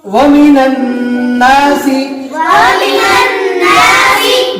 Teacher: اعوذ باللہ من الشیطان الرجیم، أعوذ بالله من الشيطان الرجيم، بسم اللہ الرحمن الرحیم، بسم الله الرحمن الرحيم، ومن الناس، ومن الناس، ایسا ٹوٹا ٹوٹا پڑھنے کا، جب تک ومن الناس یاد نہیں ہو جائے آگے نہیں بڑھنا۔ اور نون کے اوپر تشدید ہے، نون مشدد کا ایک الف کے برابر گننا کر کے پڑھیں گے